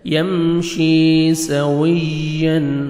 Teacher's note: امن یمشی، میم ساکن کا اظہار، جلدی پڑھیں گے، یا مد ہے 1 سیکنڈ آپ نے شین کو کھینچنا ہے، یا جزم سے پہلے زیر ہے۔ یمشی سویا، واو پہ لپس کو راؤنڈ میں لے کے جانا ہے تاکہ واو اچھی طرح ادا ہو